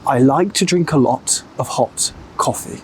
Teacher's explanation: another big difference with British English is that we like to use a clear O sound with many words. For example, O, hot, or O, coffee, or O, a lot. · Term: the O sound